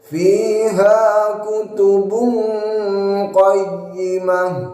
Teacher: Ikhfa'nya atau tingkat kesamarannya ialah adna. Jadi lebih banyak gunnahnya daripada ikhfa'nya atau samarnya, sehingga suara NG-nya lebih besar, lebih banyak dengungnya.